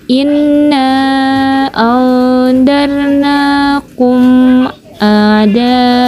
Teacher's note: bunyi mim disuarakan dengan terang dan jelas tanpa berdengung di bibir dengan mulut tertutup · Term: izhar sapawi